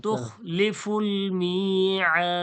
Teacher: ওয়াকফ করার ক্ষেত্রে সাকিন হয়ে যায়, তখন কি হয়ে যায়, মাদ্দে আরিজ হয়ে যায়, ৩ আলিফ টেনে ছাড়তে হয়